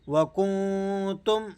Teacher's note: نون پر آپ نے اخفا ادا کرنا ہے یعنی نون کی آواز ناک میں پڑھی جائے گی